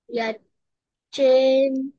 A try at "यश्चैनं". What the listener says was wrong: Half sh is there. It is not half ch. Sh pronunciation. Yes, chainam.